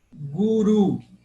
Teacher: Aí eu acentuei a última sílaba, oxítona.